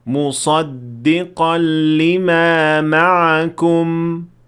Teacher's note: Closed lips is what you should have when you stop at mim sakinah.